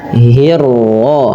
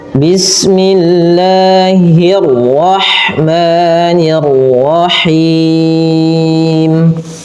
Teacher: Hihinya tipis, ra-nya ditebalkan. Kemudian nir-ra sama nir-ra, ra-nya juga tebal. Karena dia ra tafkhim.